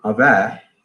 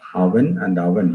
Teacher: the na alveolar element in the word final position have been dropped in Muduga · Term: final nasal is dropped